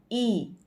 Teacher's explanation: જીભ જે છે એ આગળની તરફથી જીભનો ભાગ ઊંચો થાય છે